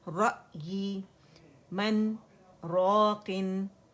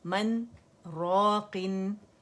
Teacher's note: ٹھیک ہے، یہاں پہ جو ہمارے ادغام ہو رہا تھا وہ قانون ختم ہو گیا کیونکہ نون کا اظہار کر دیا ہم نے. ٹھیک ہے، سانس جاری رہی، آواز توڑ دی